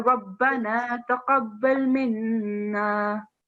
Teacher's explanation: It's just the noon with shadda, so you have to give a nasal sound. · you have to keep the noon sound for a bit longer